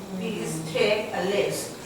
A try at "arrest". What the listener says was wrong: No, wrong. The R and the L. This requires practice. It's not a lest, it's arrest. Arrest. Arrest. You have to work on that pronunciation because it's common. A lest, no. Arrest, yes. Please take a rest. Not please take a lest.